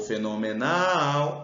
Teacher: o fenomenal é oxítona a sílaba tônica é o Nal